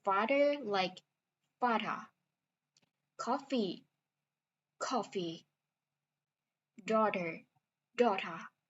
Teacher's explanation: New Yorker pronounce the vowel in father and hot the same, but these vowels sound more like the or sound in or cord.